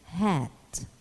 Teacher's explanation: soft palate is raised so that the nasal passage is blocked the breath is expelled through the mouth shaped for the following vowel in a continuous stream with audible friction there is no voiced counterpart of this sound this sound is · this is a breathy sound emanating from the glottis or the voice box opening which is expanded a little as a voiceless breath free from